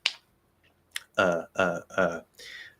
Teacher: that middle very open very clear center of gravity schwa sound